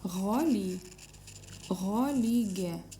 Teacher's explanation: Посмотрите в этом слове одинаковые буквы «Г», две в этом слове, но читаются, одна читается твердо «Г», а вторая читается мягко